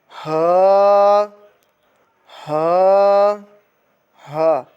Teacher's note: یہ حلق کے نیچے والے حصے سے ادا ہوتا ہے اور اس کو 1 الف کے برابر کھینچ کر پڑھیں گے۔